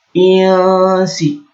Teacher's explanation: Karena ada nun sukun bertemu dengan sin, maka bacanya samar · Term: ikhfa hakiki